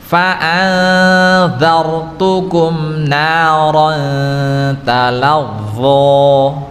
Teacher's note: jangan sampai memantul pada huruf ra ya